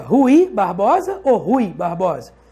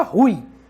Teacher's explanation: Então é como se tivesse um acento em cima do U. O U é mais forte, o I é mais fraco. Então o U é vogal e o I é semivogal.